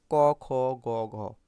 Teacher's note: জীবার গোড়ালি নরম তালুতে স্পর্শ করছে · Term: কন্ঠ বর্ণ